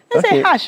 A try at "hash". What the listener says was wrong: No, you're saying it too deliberately.